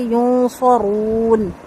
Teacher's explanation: رو کو واو کے ساتھ ملائیں گے، رو کو موٹا کر کے پڑھیں گے